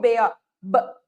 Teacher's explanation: Ela pode ser momentânea, rapidinha, ou ela pode ser fechada total, como, por exemplo, o som da letra P. Eu tenho um fechamento total e uma abertura, como se saísse numa explosão